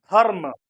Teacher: म का उच्चारण पूरे रूप में हुआ तो आप देखेंगे कि ध और म के बीच में र का उच्चारण आधे रूप में हुआ है